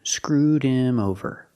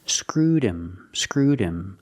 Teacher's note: With him, the H is silent. Because him is not an important word, we don't stress the word, the H is silent.